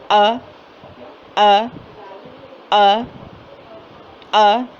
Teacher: حمزہ سخت اور جھٹکے والی آواز ہے اور منہ کے خالی حصے سے ہی اس کی ادائیگی ہو رہی ہے. حمزہ حلق کے آخری سینے کے طرف والے حصے اقصی حلق سے ادا ہوتا ہے، جیسے کہ ہم نے الف پڑھا تھا، الف بھی وہیں سے ہے.